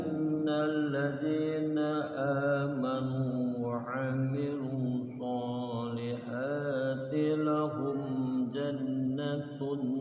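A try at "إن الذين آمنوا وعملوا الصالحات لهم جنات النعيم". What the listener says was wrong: gunnahnya panjang. Lahum jannatun na'im. Ada nun tasydid digunnahkan. Tun lahum jannatun na'im.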